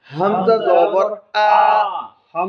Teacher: হলকের দূরবর্তী অংশ হইতে দুটি হরফ উচ্চারিত হয় হামজা হা